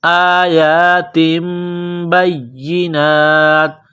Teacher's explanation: تنوین کے بعد با ہے تو یہاں آواز ناک میں چھپائیں گے، غنہ کریں گے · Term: اقلاب